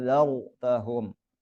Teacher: ada ro sukun sebelumnya fathah, ro-nya dibaca tebal